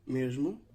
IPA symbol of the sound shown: ʒ